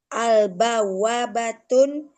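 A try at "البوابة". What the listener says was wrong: al nggak boleh tun. Al-bawwabah. Al-bawwabatu.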